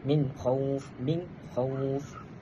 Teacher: dia ialah izhar halqi. Kita kena jelaskan huruf nun.